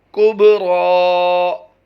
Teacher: बा पर हम कलकला करेंगे और रा को पुर पढ़ते हुए खींच कर लंबा करके पढ़ेंगे